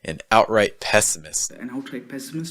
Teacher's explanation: outright is going to have that held T sound between out and right. And then pessimist will end with that held T sound.